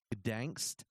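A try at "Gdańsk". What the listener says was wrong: You don't pronounce the G; it's just Donsk.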